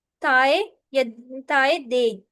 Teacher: dental sound जो है वो हमारी टंग टिप, यानी कि जुबान की जो टिप और ब्लेड है और अपर फ्रंट टीथ से प्रोड्यूस होती है